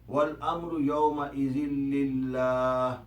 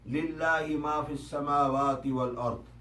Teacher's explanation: اسی طرح اگر لفظ للہ سے پڑھنا شروع کیا جائے گا تو بھی لفظ اللہ کے لام کو رقیق یا نرم پڑھا جائے گا